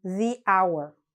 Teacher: sometimes h which is a consonant is silent and so it actually sounds like a vowel